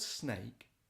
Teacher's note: the word snake has that sibilant s at the beginning and that plosive um k in the middle of the word